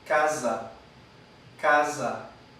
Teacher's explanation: La sibilante alveolar sonora